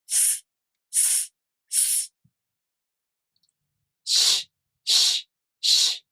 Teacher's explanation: both sounds, the [s] sound as in Sa, Su, Se, So and the [ɕ] sound as in Shi are voiceless, meaning your vocal cords here do not vibrate.